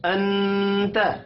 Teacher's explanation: نون ساکن کے بعد حروف اخفاء یعنی تا آ رہا ہے، اخفاء حقیقی ہوگا